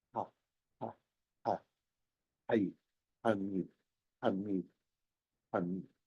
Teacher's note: Hay una que pasa aquí, que se articula en la laringe, no se cierra la glotis